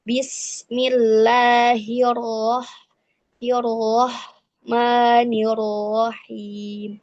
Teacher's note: ketika bertasydid dia hampir tidak tampak getarannya. Tapi tetap kalau misalnya tampak juga tidak lebih dari dua getaran.